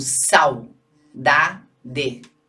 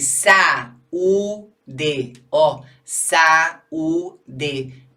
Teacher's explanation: Eu mexo 3 vezes a boca, são 3 aberturas de boca, portanto, são 3 sílabas e o AU forma um ditongo.